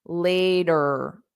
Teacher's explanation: in American English, R is a strong sound. So you will hear it at the end.